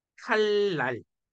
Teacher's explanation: 그러면 어떻게 된 거라고? 뒤에 있는 니은이 리을에 영향받은 거지. 그래서 리을하고 똑같이 변한 거잖아. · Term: 순행